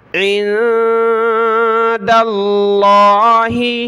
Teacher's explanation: عہدن عند اللہ، عین کو ملائیں گے نون ساکن کے ساتھ، نون ساکن کلرفل ہے، ناک میں آواز پیدا کریں گے ، اور دال کو آگے لفظ اللہ کے ساتھ ملانا ہے،